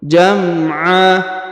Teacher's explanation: tanwinnya dirubah menjadi fathah atau A dan dipanjangkan dua harakat